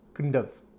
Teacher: But if you slow down, we'll say couldn't have, shouldn't have. But in fast English conversation, you're going to hear the of sound